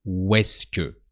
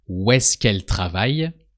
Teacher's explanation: the où and the est-ce que are usually pronounced so close that you only hear the sound of the W, like où est-ce que.